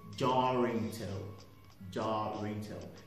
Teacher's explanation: you can link the r from the jar to the next word if the next word is starting with a vowel